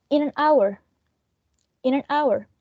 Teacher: And in this case, hour is our nucleus, but we don't have a head, because in this case, these elements are not stressed. These, in and an, are function words, therefore they are not stressed. And also has a schwa, so there's no way that those words are stressed.